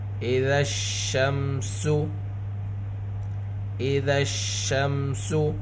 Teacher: حروف شمسی سے پہلے الف لام ہے، الف لام دونوں نہیں پڑھے جائیں گے